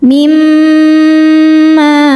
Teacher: Selanjutnya ada hukum idgham bi gunnah karena nun sukun bertemu huruf mim. Cara bacanya bunyi nun dileburkan ke mim disertai dengungan. Jadi mim tahan. Mimma. Ma hukumnya mad tabi'i dhahiri sebab ada alif sebelumnya fathah. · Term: idgham bighunah